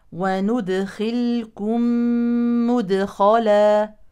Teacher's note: هذه الميم الساكنه يليها ميم متحركه تدغم الساكنه في المتحركه ادغام شفوي